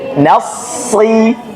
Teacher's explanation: sod dia ada sifat isti'la, artinya dia ditinggikan atau tebal.